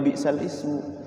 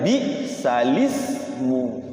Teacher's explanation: situ tulisannya bal Ismu tapi dibacanya bukan bisal Ismu bacanya balismu jadi lamnya tadinya sukun jadinya hidup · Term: naqel